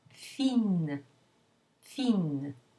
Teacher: add an e to make that feminine and you lose the nasal vowel it becomes oral